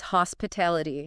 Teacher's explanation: You can feel the emphasis on TA. That's word stress.